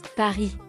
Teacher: pay attention to uvular R